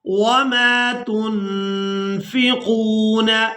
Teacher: اعوذ باللہ من الشیطان الرجیم، بسم اللہ الرحمن الرحیم، وما تنفقون، یہاں نون ساکن پر اخفا کریں گے، یعنی نون ساکن کی آواز کو ناک میں چھپا کر ادا کریں گے